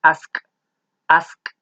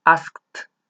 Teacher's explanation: al ser un verbo que su sonido final no utiliza las cuerdas vocales porque pueden intentarlo con su garganta asq asq no hay vibración